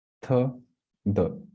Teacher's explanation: your tongue is touching the teeth, especially the upper teeth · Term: dental or dantya varnas